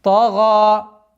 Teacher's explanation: При остановке аннулируется фатха и остается у нас долгота в размере естественного удлинения. Тага. И таким образом, «Идхаб иля фир'ауна иннаху тага».